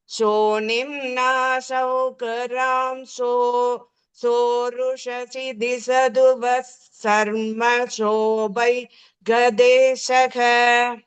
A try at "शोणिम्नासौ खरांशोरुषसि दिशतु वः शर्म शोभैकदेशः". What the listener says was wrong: Beautiful, correct.